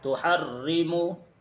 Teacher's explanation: تحرمو میں را کے نیچے زیر کی حرکت ہے، اس لیے اس را کو بھی باریک پڑھیں گے